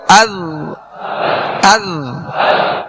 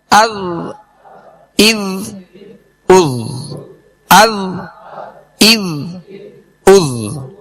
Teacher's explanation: حمزہ ذال زبر از، حمزہ ذال زیر اذ. ذال کو جب ادا کریں گے زبان کا سرا اوپر کے جو سامنے والے 2 دانت ہیں اس کے اندرونی کنارے سے لگائیں گے، یہ اس کا مخرج ہے، اس کے نکلنے کی جگہ ہے.